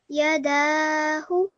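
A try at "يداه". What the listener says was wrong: Excellent. Well done. And you made sure that you prolonged your dal for 2 seconds.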